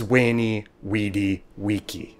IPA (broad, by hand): we: ni: , wi: di: , wi: ki: